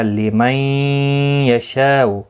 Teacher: نون ساکن کے بعد یرملون کا یا ہے، ادغام مع الغنہ ہوگا، گنہ کے ساتھ پڑھیں گے. شاء، یہاں پر مد متصل ہے، 4 الف کی مقدار کے برابر کھینچ کر پڑھیں گے.